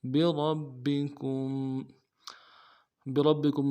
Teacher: را کو موٹا کرنا ہے اور را کو آگے با کے ساتھ ملانا ہے، با کے اوپر تشدید ہے، زور دینا ہے، اور بکم میں کم میں میم ساکن ہے، غنہ کرنا ہے۔